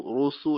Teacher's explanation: را کے اوپر جب پیش ہوتی ہے تو یہ پر پڑا جاتا ہے